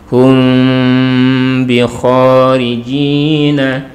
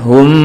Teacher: mim sukunnya di sini adalah dibaca dengan samar disertai dengan dengung, kemudian tidak sampai terkatup untuk bibir kita. Jadi ada rongga, ada furjahnya. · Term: ikhfa syafawi